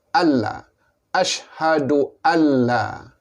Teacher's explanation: Nun mati bertemu dengan lam, maka dia idgham, memasukkan bunyi nun ke dalam lam.